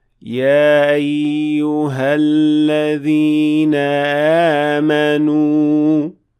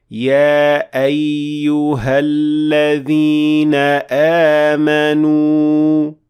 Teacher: Instead, you should always make sure that you're making that cutting sound of hamza produced by closing down the vocal cords completely